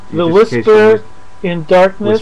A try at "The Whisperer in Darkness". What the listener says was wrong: Whisperer, yes. I think you keep saying whisper.